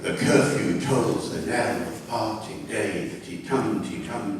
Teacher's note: It's a tum-ti-tum-ti-tum-ti-tum sort of rhythm. It's called stress-timed rhythm